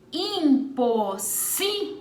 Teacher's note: Nessa palavra, a sílaba tônica é a penúltima, portanto, ela é paroxítona. E ela está acentuada porque ela termina em L.